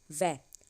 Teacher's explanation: वकारो दंतोष्ठयो, व वर्णस्य उच्चारण उभयो दंत ओष्ठ स्थानो भवन्ति, व का उच्चारण दांत और होठ दोनों से होता है